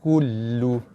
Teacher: Okey, ada 2 sabdu. Sabdu pada lam, tekan dan lepas